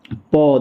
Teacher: दोनों ठो होंठ दोनों ठो होठ सटेगा। · दोनों तो होंठ सटेगा, ठीक है। तो प जो है आपका होंठों से बोला जाता है। इसको कहीं कहीं ऐसा लिखा हुआ रहेगा, ओष्ठ। · प देखिए, दोनों तो होंठ सटता होगा, प बोलिएगा तो क्या सटता है कि नहीं? दोनों तो होंठ सटेगा, ठीक है। तो प जो है आपका होंठों से बोला जाता है।